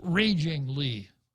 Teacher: i have to put the stress on the first syllable in senator lee's name